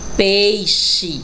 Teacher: também x com som de ch